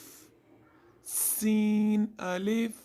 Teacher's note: سین میں سیٹی والی آواز آئے گی